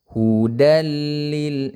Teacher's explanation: idgham tidak disertai dengan dengung